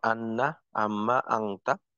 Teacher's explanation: নাকের বাঁশি থেকে গুন্না উচ্চারিত হবে